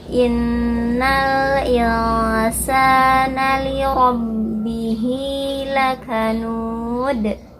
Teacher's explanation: Innal nun bertasydid gunah, dengungkan.